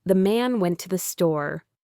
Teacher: The to often reduces to a schwa. The main tip here is to really relax your mouth.